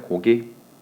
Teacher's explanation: 그런데 실제로 발음을 해보면 앞에 있는 기역은요, 무성음이에요. 무성음. 이렇게 발음이 되고요. 뒤에 있는 기역은 유성음으로 발음이 됩니다. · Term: 변이음